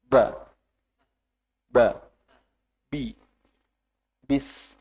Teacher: Ba tidak terlalu banyak udara yang keluar. Jadi ba sampai kalau ada kita pelajari di UMI atau WAFA itu, kalau kita didekatkan dengan kertas, itu kertasnya nggak gerak.